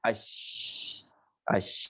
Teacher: Jadi dua gigi berbunturan dengan itu semuanya. Dari muncul dari tengah lidah, ya, habis itu menyebar berbunturan dengan gigi atas sama gigi bawah. Itu namanya shin.